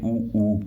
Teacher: उ ऊ यानी होठों के द्वारा बोला जाए